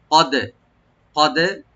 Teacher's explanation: ক্বালা কদ, কদ কফটাকে আমরা রাইট দিয়ে এবং এন্ড অফ টাং মানে জিহ্বার গোড়া থেকে আনবো, আর দালে আমরা একটু কলকলা করবো, ইকু করবো।